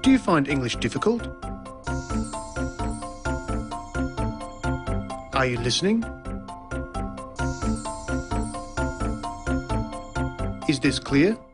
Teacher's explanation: there's the high or rising tone used for asking a yes-no question